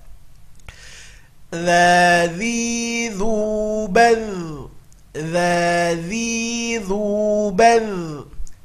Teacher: Huruf dza harus keluar ujung lidahnya, kalau tidak dia akan berubah menjadi za.